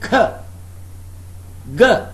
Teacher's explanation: the velum is raised so that air cannot escape through the nose. Okay? Velum is raised.